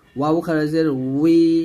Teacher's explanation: দুই ঠোঁট গোল করে ঠোঁট থেকে আনছি